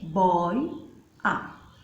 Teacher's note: Eu emiti duas vogais, uma mesma abertura. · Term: ditongo aberto